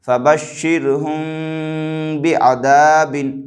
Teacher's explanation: میم ساکن کے بعد با رہا ہے لہٰذا یہاں پر اخفاء شفوی ہوگا، یعنی میم ساکن کی آواز کو ناک میں چھپا کر کے پڑھیں گے